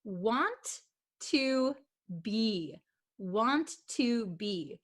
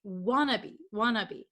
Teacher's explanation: So when we speak really fast, it becomes wannabe, wannabe. So want to becomes wanna and be. We just made it one word, okay?